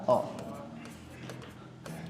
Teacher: अ मतलब ऐसा लगता है कि जैसे आप मुंह के बीचों बीच से उस वर्ण का उच्चारण कर रहे हैं। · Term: मध्य स्वर